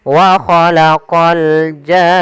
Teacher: Maka wa khalaqal jan baru masuk ke nun. Panjangkan janya dulu 6 harokat baru masuk ke nun. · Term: mad lazim kalimi musaqqal